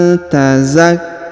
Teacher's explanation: huruf nun sukun bertemu ta, maka kita dengungkan dan kita samarkan.